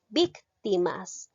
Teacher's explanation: Recae la mayor fuerza de voz en la antepenúltima sílaba. Es una palabra esdrújula, por lo tanto, la llego a tildar.